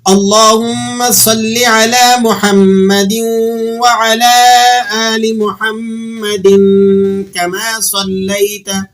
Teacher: دال کے نیچے جو دو زیر کی تنوین ہے اس پر ہم نے غنہ ادا کرنا ہے اور پھر اسے آگے کما کے ساتھ جوڑ کر پڑھنا ہے